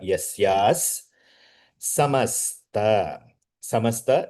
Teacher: Visarga will change into Sa Saraswati Sakara.